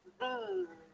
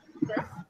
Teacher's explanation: begins with a strong TH sound as well, but then it's a high E. Long E. And it with a sound like a Z.